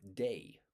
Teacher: There are actually two vowel sounds inside that single a. It's a ae or the or vowel sound of wei.